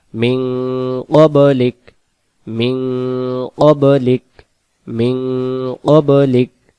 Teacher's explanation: এখানে নুন টাকে উন উচ্চারণ হচ্ছে অনুষ্কারের মত কেন আরবিতে নিয়ম হলো নুন সাকিনের বাম পাশে 15 টি অক্ষর